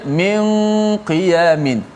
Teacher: nun bertemu dengan qaf, ada ikhfa dengung di situ